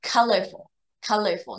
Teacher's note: 音的时候，然后呢，后面有什么，LL▁或者是▁R，对不对？两个都很黏，对不对？所以 这里的▁O▁这个▁OR▁的▁O▁跟▁UL▁的▁U▁都会变成▁schwa